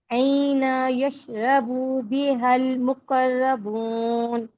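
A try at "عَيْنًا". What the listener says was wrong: नहीं, यहाँ पे ना नून के दो जबर यहाँ इदगाम हो रहे हैं, तो आइनन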